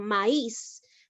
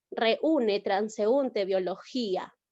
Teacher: la vocal cerrada suena más posee la mayor fuerza de voz